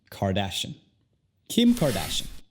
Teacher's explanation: Y ahora tenemos car. Y luego, ya que hay más de una sílaba en su apellido, las otras se convierten al sonido schwa.